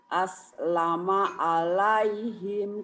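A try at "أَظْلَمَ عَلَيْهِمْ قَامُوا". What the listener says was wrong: aslama itu kan zo bu. Jangan aslama bu. Zo. Azlama zo. ZHO. Azlama jangan aslama bu. Kalau aslama pakai sin, pakai s.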